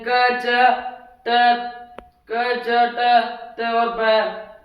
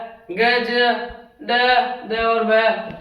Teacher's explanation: जिन व्यंजनों के उच्चारण में श्वास वायु कम निकलती है, उन्हें अल्पप्राण कहते हैं।